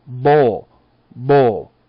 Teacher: A B has voicing. Vibration added to the sound. A B would be like bowl, bowl.